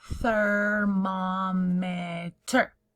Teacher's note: your tongue has to touch your teeth to say that th sound at the beginning